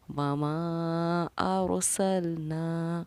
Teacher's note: میں نے را کو پر پڑھا ہے، یعنی موٹا پڑھا ہے، منہ بھر کے پڑھا ہے۔ · ایسی کنڈیشن میں اس مد کو ہم کہتے ہیں مد منفصل، اور پڑھنے کا طریقہ اس کو یہ ہے کہ 2.5 الف کی مقدار کے برابر ہم اس میم الف زبر ما کو کھینچ کر پڑھیں گے۔